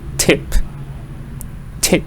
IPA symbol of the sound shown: ɪ